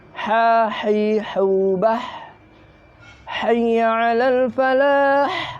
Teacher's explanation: Ha ini mempunyai sifat hamas. Jadi harus mendesis ha, mengeluarkan nafas, mengeluarkan angin.